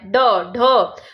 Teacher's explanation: जिन व्यंजनों के उच्चारण में जीवा का अग्रभाग मूर्धा को झटके से स्पर्श करके हट जाता है उसे क्या कहते हैं, उक्षिप्त कहते हैं। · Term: उक्षिप्त या ताड़न जात